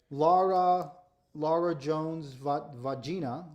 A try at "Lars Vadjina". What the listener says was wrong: Well, it's Lars Vadjina, not Lar.